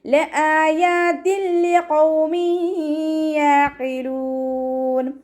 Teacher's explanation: തെൻവീനിലുള്ള നൂനിൻ്റെ സൗണ്ടിനെ ലാമിലേക്ക് ലയിപ്പിക്കണം, പക്ഷെ അവിടെ ഉന്ന കൊടുക്കാൻ പാടില്ല, മണിക്കാൻ പാടില്ല.